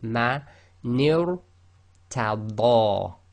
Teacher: So you've got to go ni, which is empty mouth, light, to ra, which is heavy tafkhim.